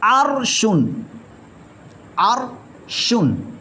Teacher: آگے اگلی صورت ہے را ساکن سے پہلے حرف پر زبر یا پیش ہو، جیسے عرشن، عرشن، را ساکن سے پہلے حرف پر زبر آ گئی لہذا یہ را پر موٹا ہوگا